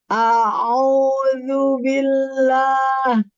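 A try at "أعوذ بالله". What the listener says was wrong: Sekarang tampakkan huruf dzalnya. A'udzu, dzu. Dzu itu di mana makhrajnya? di ujung lidah bertemu dengan ujung gigi sari atas. Jadi konsepnya lidahnya dia harus sedikit keluar, sedikit kayak mau digigit tapi nggak digigit. Yang penting lidahnya harus terjulur keluar seperti melebihi dari gigi. A'udzu.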